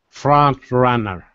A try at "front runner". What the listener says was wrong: Good.